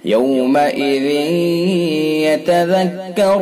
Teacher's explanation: ادغام ناقص بالغنہ ہوگا، یعنی غنہ کے ساتھ اس کو پڑھا جائے گا